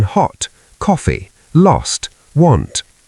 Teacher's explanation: Use the lot rounded sound in hot, coffee, lost, want.